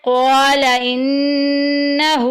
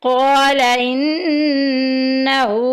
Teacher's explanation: नून के ऊपर शद आएगी हम वहाँ गुन्ना करेंगे, नाक में आवाज़ लेके जाएंगे। क़ौला इन्नहू, हू के ऊपर उल्टी पेश आ गई, एक अलिफ के बराबर लंबा करेंगे।